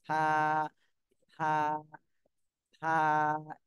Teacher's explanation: জিহ্বার আগা সামনের উপরের দুই দাঁতের আগার সাথে লাগবে, লেগে হালকা ভাবে নরম ভাবে উচ্চারণ হবে।